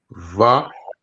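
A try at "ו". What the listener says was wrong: So this would be like a W sound, like wa.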